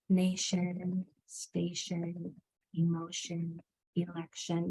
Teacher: That TI actually says sh, and the O makes the schwa sound because TION is a suffix that comes at the end of words.